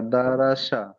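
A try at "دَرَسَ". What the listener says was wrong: সিন, ওটা শিন, শিন নয় সিন, জিভের আগা দিয়ে সিন, সিন উচ্চারণ হবে দারসা।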